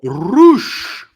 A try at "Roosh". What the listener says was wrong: Got to roll your R's more.